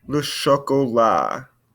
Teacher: Don't want to hear this T on the end of chocolat.